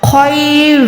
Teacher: خو جو ہے حلق کے اوپر والے حصے سے ادا ہوگا